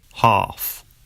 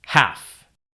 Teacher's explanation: In other words, sounds represented by the letter A. Ah in UK English normally becomes an a sound in American English.